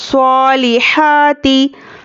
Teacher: स्वाद पर खड़ा ज़बर है, बराबर है अलिफ मद्दा के, एक अलिफ के बराबर खींचकर पढ़ेंगे। स्वालिहाती, हा पर भी खड़ा ज़बर है, खड़ा ज़बर बराबर है अलिफ मद्दा के, एक अलिफ के बराबर खींचना है, हरकत को जल्दी पढ़ना है।